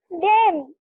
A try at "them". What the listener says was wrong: them. THEN তো THEN বলছো না M বলছো, ক্লিয়ার আসছে না।